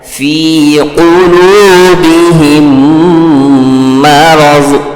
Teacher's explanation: میم ساکن کے بعد میم آ رہا ہے، اس لیے میم کو میم سے ملا کر غنہ کے ساتھ پڑھیں گے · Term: ادغام شفوی